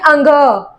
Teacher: इसमें जो स्वर है वो हमारी नाक और मुंह दोनों से निकल रहा है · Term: अनुनासिक